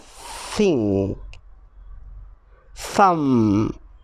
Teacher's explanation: sometimes they do it quietly like at the beginning of thing thumb this sound is called the unvoiced th sound